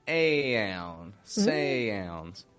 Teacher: I do use that same diphthong in cow or out or about, but when I add an N after those, then I kind of modify it a little bit. I make it aoun, sounds.